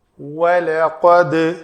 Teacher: سورۃ الملک آیت نمبر 5۔ وَلَقَدْ واو شفتن گول، لام پتلا، قاف موٹا پر حرف اور دال پھر پر پتلا اور دال کے اوپر قلقلہ۔